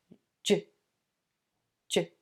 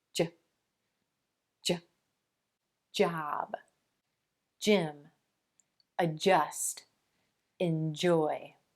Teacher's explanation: This is a voiced sound, meaning that your vocal cords are involved and vibrating.